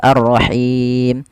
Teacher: Alif Lam di sini kita namakan dengan alif lam syamsiyah yaitu alif lam yang diidgamkan dan dimasukkan ke huruf setelahnya dan dia tidak dibaca